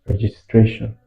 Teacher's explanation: So registration has its stress on the third syllable.